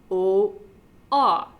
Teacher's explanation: an open mid vowel so it's a backwards c or literally an open o